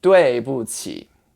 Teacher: And the middle syllable just doesn't really have a tone. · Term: neutral tone